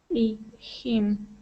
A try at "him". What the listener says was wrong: Okay, very close. You still need to push your tongue down just a little bit. When you pronounce an E, your tongue is flattened a little bit against the top of your mouth. Almost. It's not touching the top, but it's very close. Okay, that's how we get that E sound.